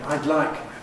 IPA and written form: aɪd ˈlaɪk (I’d like)